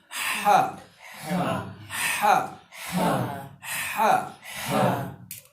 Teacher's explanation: हा जो है हलक के दरमियान से अदा होता है